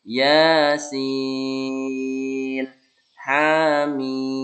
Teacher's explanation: ianya jangan terlalu panjang, sinnya yang lebih panjang